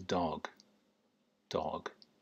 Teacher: that's kind of not very open oh sound. Dog. Very slack. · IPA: ɒ